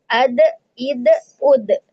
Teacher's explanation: Huruf kol-kolah sehingga ketika sukun dia memantul.